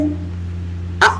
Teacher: जैसे आ होता है, इसको बोलते हैं कंठ से।